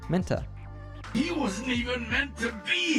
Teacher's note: when we have a word ending in a t- sound followed by another word starting with a t- sound it's common to merge those two t sounds